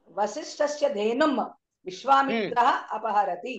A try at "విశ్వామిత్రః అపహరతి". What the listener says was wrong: అది విశ్వామిత్ర కాదు, విశ్వామిత్రః అపహరతి.